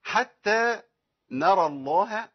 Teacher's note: عندي راء مفخمة ولام اسم الجلالة مفخمة، الهاء بعديها مرققة. معظم الناس بيتخن الهاء ويفخمها ويغلظها، والهاء حرف في القرآن كله مرقق